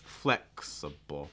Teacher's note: the key word part of this word is the the first syllable that's your stress